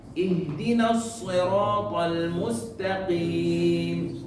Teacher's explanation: Huruf qaf yang al-mustaqim kurang mantap, ya, kurang kuat.